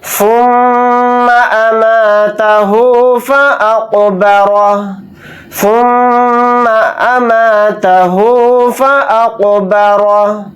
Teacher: میم کے اوپر تشدید ہے تو یہاں پر غنہ کر کے پڑھیں گے